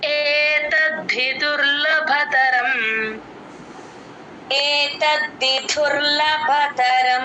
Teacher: ఏ B సిడిలో ఏ లాగా చెప్తే correct కరెక్ట్గా కంఠంలో నుంచి వస్తుంది ఏతద్ధి త కి ద ని జాయిన్ చేసి చెప్పాలి ద కింద ద వత్తు మహాప్రాణం రెండు వినిపించాలి